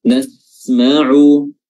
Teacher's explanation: Nasma'u ya huruf sinnya betul-betul diberikan haknya sebagai huruf yang as-safir ya, huruf yang memiliki sifat safir atau sifat yang berdesis ya. Nasma'u huruf ainnya makhrajnya adalah wasatul halq, pertengahan tenggorokan,